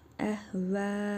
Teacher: Sonra həmzə gəlib. Vav hərfini 4 əlif miqdarı uzadırıq. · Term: məddi muttasıl